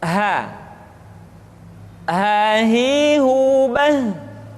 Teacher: Selanjutnya huruf ha dikeluarkan dari tenggorokan yang terjauh, sama seperti kita mengucapkan huruf a.